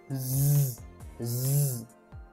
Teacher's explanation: there is a vibration, so it means that it's voiced